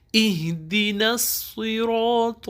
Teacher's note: تو موٹی آواز میں پڑھیں گے، تا نہیں کہنا، تو کہنا ہے